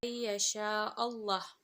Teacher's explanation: huruf lam yang terdapat dalam perkataan Allah dan didahului oleh huruf yang berharokat fathah dibaca tebal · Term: lam tafkhim